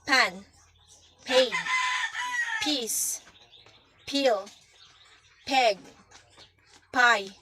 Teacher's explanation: To produce the sound of letter P, first you will move your lips toward while pushing air out in a short burst. Your vocal cords should not vibrate. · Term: P sound